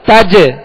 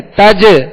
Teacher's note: جیم پر قلقلہ کریں گے